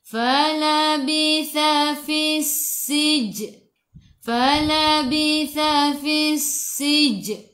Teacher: Sin sifat hurufnya safir, kena bunyikan okey